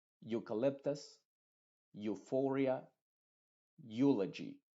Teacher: por ejemplo eucalyptus Euphoria eulogy te das cuenta que esta eu la e está siendo completamente muda y la u es la que se está pronunciando con su sonido original número uno que es Yu